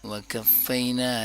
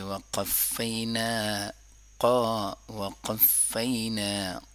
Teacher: قاف کی آواز زبان کی جڑ سے ادا ہوتی ہے۔ جب زبان کا جڑ تالو کے ساتھ، نرم تالو کے ساتھ ٹچ ہوتا ہے تو قاف ادا ہوتا ہے۔